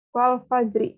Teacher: Terus yang kedua ada Al-Fajr ayat 1, wal fajri. Nah, ini kan juga ro-nya berharokat kasroh, makanya dibacanya itu tarkik atau tipis